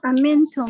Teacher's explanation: Sebab amintum nun, lepas tu ada ta kan? Bertemu dengan ta, so dia ada dengung. So bila ada dengung, dia tak letakkan tanda sukun tu secara jelas.